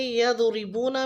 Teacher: यदरिबूना में दुआत को पुर पढ़ेंगे, लेकिन यहाँ पे रा के नीचे कसरा है यानी ज़ेर है, तो हम रा को बारीक पढ़ेंगे।